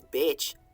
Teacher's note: And the plural was beech, B-E-E-C. It was a palatal C, like a ch sound.